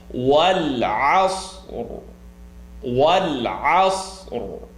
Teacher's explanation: The ra is going to be considered heavy. · there's the faintest of the ra sound